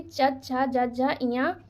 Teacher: ये हमारे जो वर्ड होते हैं इनका उच्चारण स्थान तालु से किया जाता है।